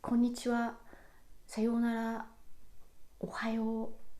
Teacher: there is almost no difference in pitch between ko and n. · The pitch is almost flat. That's why it's called flat pattern.